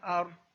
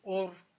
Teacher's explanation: یعنی زبر اور پیش کی صورت میں رو ساکن کو پر کر کے پڑھا جائے گا